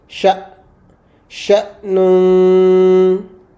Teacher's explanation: Whenever we have a sukoon on hamza, we pronounce it with a certain kind of a jerk sound